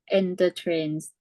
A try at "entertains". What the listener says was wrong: So no need for R here. This is just tains. Enter. All right, entertain.